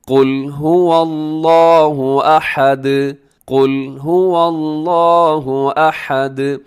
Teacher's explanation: هو اللہ، یہ درست نہیں ہے هو اللہ، بلکہ هو اللہ، ایسے هو اللہ احد، اسے آحد نہیں پڑھنا بلکہ احد، ہا کا خیال رکھیے گا. اور آخر میں دال کو آپ نے ہلانا ہے، اس کی آواز کو ڈبل کرنا ہے، کیونکہ وہ حروف قلقلہ میں شامل ہے.